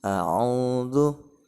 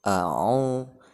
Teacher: Yang pertama jelas a, lalu kemudian ainnya ditekan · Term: alif dan ain